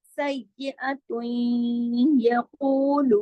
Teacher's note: ऊ मोटा, लू बारीक, दोनों 2-2 हरकत खींचेंगे